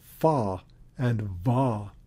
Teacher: fa and va are labiodental, meaning that the upper teeth contact the lower lip